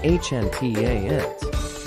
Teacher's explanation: with the emphasis on the first syllable, hand. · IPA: /ˈhændɪˌkæpt/